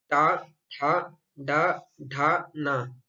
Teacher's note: इन 5 वर्णों का उच्चारण हम मूर्धा के द्वारा करते हैं, इसलिए इसे टवर्ग यानी इसका उच्चारण स्थान मूर्धा को माना गया है।